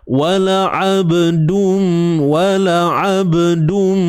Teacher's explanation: tanwin bertemu mim, idgham bi gunnah. Masukkan dengan dengung. Dum, masuk dengan sempurna.